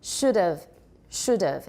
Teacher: in running speech will usually or very often drop the H